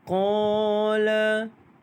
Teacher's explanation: Qala dibaca dengan panjang 2 harakat kerana mad asli huruf alif.